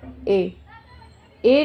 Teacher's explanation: जो बोला जाता है कंठ से भी साउंड आ रहा है और तालु से भी आ रहा है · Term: कंठ तालु